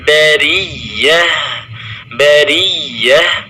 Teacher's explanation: huruf ya bertasydid ditekan, tetapi tidak boleh berlebihan di dalam menekannya